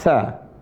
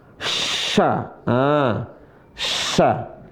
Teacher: Ujung lisan ketemu ujung gigi seri atas. Sa. Kalau yang ini sya, tengah lisan ketemu langit-langit.